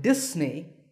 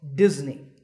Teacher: The S in the middle is actually a Z sound, as you can see in the pronunciation symbols on the screen.